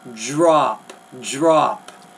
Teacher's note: gonna say drop more like a J and R drop drop it's not really a d there it's more of a j